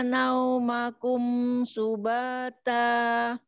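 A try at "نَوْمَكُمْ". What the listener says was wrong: Oh ya, tapi tajamkan unya. Nauma. Ya, bukan sedikit tuh, memang monyong dua-duanya ya. Iya, karena huruf waw. Iya, pokoknya tajamkan u, jangan mendekati o. Naumakum.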